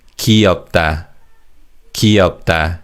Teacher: in fast speech, the first syllable 귀 is pronounced as 기